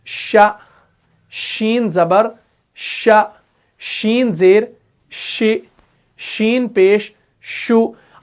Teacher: जब भी हम हरफ शीन को अदा करते हैं तो मुंह के अंदर जो है ना पूरी आवाज फैल जाती है। शीन की पहले आवाज पूरी तरीके से मुंह में फैल जाती है, उसके बाद जो है शीन अदा हो जाता है। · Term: सिफत तफशी